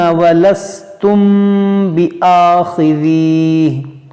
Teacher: میم ساکن کے بعد با ہے تو یہاں پر کریں گے اخفاء